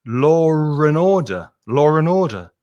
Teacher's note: there's an intrusive r sound that gets put in the middle · Law and order, when you say it normally, has an intrusive R sound.